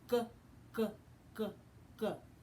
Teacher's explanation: our mouth is open our tongue tip is down and the back of our tongue has to go up and we turn our voice on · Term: G sound